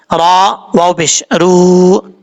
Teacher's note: را کے اوپر پیش را پر پڑا جائے گا یعنی موٹا پڑا جائے گا، واو مدہ ایک الف کی مقدار لمبا کریں گے۔